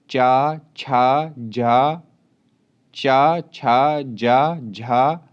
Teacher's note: चा, छा, जा, झा, त्रा या शा तालव्य ध्वनियां हैं